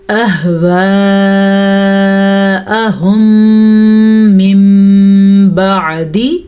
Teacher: میم ساکن کے بعد دوبارہ میم آ جائے تو ادغام شفوی کا قاعدہ ہو رہا ہے. ان دونوں کو آپس میں ملانے کے ساتھ ساتھ غننے کے ساتھ پڑھیں گے · مد کا خیال رکھنا ہے. یہ والی مد تقریباً 5 حرکات عربیہ کے برابر ہے تو 4 سے 5 سیکنڈ تک اس کو لمبا کرتے ہیں.